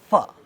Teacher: Therefore, it is classified as fricative. F is labio-dental fricative